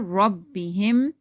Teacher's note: This is also wow madda, wow silent, before that there is a mad, there's a zamma, so we're going to stretch it according to one alif. Rabbihim, ra, you have to read it thicker